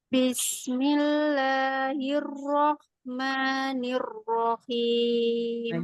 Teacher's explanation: Di kata Ar-Rahman, ha-nya lebih ngalir.